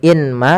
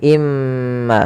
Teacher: Maka cara bacanya masukkan ke huruf mim, yaitu imma, bukan lagi inma tapi imma, sambil ditahan gunnahnya 2 harokat. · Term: idgham bi gunnah